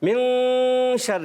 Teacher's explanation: جب بھی نون ساکن تنوین کے بعد حرف اخفا میں سے کوئی حرف آتا ہے تو وہاں پر اخفا ہوگا یعنی غنہ ہوگا. نون کو ہم چھپا کے ادا کرتے ہیں